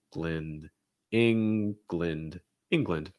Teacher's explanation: to watch out for is that ng so that n sound you're raising the back of your tongue lowering the front of your tongue you should also feel the air going out of your nose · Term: ng sound